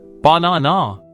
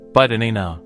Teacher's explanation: The first and last have become lazy schwas.